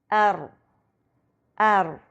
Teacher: Note کریں کہ زبان کی نوک اور اس کا اوپری حصہ دونوں استعمال ہو رہے ہیں اور زبان کی نوک اوپر کے اگلے 2 دانتوں کے مسوڑوں سے لگ رہی ہے۔ را میں جو یہ ار کی آواز آتی ہے، یہ ایک وائبریشن یا تکرار ہے